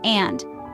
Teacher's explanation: The D at the end is more pronounced and there's no O sound following it.